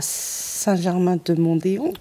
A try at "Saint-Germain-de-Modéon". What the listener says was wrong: Saint-Germain-de-Modéon. On dit pas Mondéon, de Modéon.